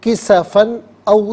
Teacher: او تسقط السماء کما زعمت، کما زعمت، علا علیحدہ ہے، نا علیحدہ ہے، ملا کر پڑھیں گے، علینا، کسفن، کسفن میں فا پر 2 زبر کی تنوین، تنوین کے بعد او میں آپ دیکھیں حمزہ آ رہا ہے، حرف حلقی آ رہا ہے، تو تنوین پر یہاں اظہار کریں گے، اخفا یا غنہ نہیں کیا جائے گا